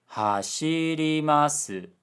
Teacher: Hashirimasu, low high high high low. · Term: pitch pattern